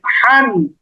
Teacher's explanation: জিমের পরে যেই হা সেই হা এর উচ্চারণ একটু গলার মাঝখানে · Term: বড় হা